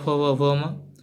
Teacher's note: प वर्ग ओष्ठ वर्ण हैं, यह होठों का स्पर्श करते हैं।